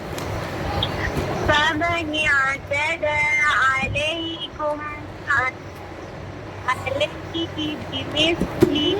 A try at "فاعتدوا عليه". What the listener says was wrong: فاعتدوا छोड़ दिया आपने فاعتدوا عليه